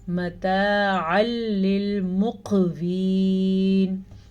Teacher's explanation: ادغام یعنی ان کو آپس میں ملائیں گے تو ضرور لیکن غنہ نہیں کریں گے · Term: ادغام بلا غنہ